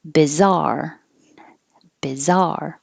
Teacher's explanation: So 2 syllables, stress on the second syllable.